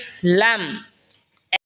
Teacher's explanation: জিহ্বার আগার কিনারা সামনের ওপরের মারির দাঁতের সঙ্গে লাগা উচ্চারণ হবে লাম।